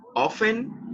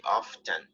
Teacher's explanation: you can say it often and you do not pronounce the letter T, or you can say often, but both are acceptable